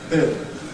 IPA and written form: bɪld (build)